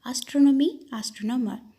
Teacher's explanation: Stress the third syllable from the end.